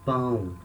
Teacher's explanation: We say pão with a nasal sound. The sound comes from the nose.